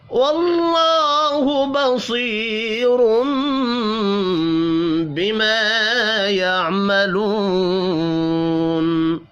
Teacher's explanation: اللہ کا نام زبر کی وجہ سے پر پڑھا جائے گا ، بصیرم صاد اور را بھی پر پڑھے جائیں گے، یا